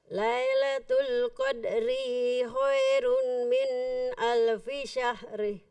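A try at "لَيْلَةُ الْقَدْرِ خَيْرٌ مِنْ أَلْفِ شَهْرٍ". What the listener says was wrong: Ketika baca Lailatul Qadri di ayat ketiga, ro-nya nggak panjang. Lailatul Qadri. Tidak, langsung. Lailatul Qadri khairum.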